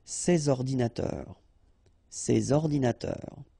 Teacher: you should make the liaison between S and O